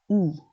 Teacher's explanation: you need to actively lengthen the long e sound as the colon implies to sound more natural